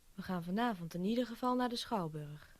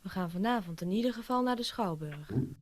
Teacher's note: the last sentence stress is realized by means of a fall